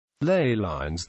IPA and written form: leɪ laɪnz (Ley lines)